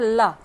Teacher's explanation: जिसके उच्चारण में हवा जीव के पार्श्व बगल से निकल जाए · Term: पार्श्विक वर्ण